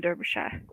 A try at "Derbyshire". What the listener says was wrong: Derbyshire. We would say Derby. The E would be classed as an A. So we wouldn't say Derby, we would say Derby. For us in UK, we would pronounce it just Derby. Derbyshire.